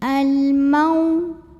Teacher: Maka lam sukun ini kita bunyikan dengan idhar atau jelas. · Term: alif lam qamariyah